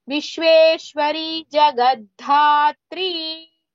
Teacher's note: Jagadhatri, one dha is alpa prana, the other dha is mahaprana.